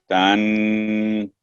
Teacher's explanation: ایک تو تن نون پر جو اخفا ہے 2 سیکنڈ ہونا چاہیے کم سے کم تن. اس کے علاوہ جو آپ نے بولا نا علی العرش استوى، کو لمبا کرنے کی ضرورت نہیں، علی العرش استوى.